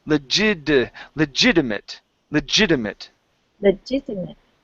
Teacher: Okay, so what we're going to do with that T, we're going to switch the T to a flap T sound.